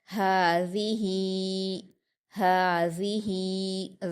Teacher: ذال پر حرکت جلدی پڑھیں گے۔ ہا پر کھڑی زیر ہے، اس کو یا مدہ کی طرح 2 حرکات کھینچ کر پڑھیں گے، ہذہ، ہذہ۔ ذال کو نرمی سے ادا کریں گے، اس بات کا خاص خیال رکھیے۔